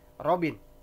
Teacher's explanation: R dalam bahasa Inggris biasa di depan, kalau dia di depan kata biasanya jelas, bergetar ya. Hampir sama dengan pengucapan dalam bahasa Indonesia.